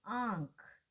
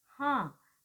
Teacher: जैसे हम बोलते हैं आंख, आप देखेंगे कि यहाँ पर आंख जब हम बोलेंगे, या हम कहें हाँ, तो यहाँ पर नाक और मुंह दोनों मार्ग से जो वायु है वो बाहर आती है। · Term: अनुनासिक स्वरों